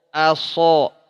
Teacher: aso, a tipis, so-nya tebal. Jangan oso, a, aso.